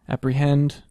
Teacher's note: you get that last syllable stress